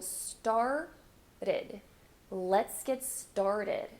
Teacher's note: you can substitute that t for the flapped T which is in Portuguese the as in so started let's get